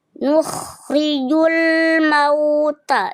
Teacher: Ada ro berharakat kasrah namanya ro tarkik ya. Dia dibaca tipis.